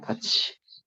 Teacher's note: 티읕이 치읒으로 소리 나는 현상.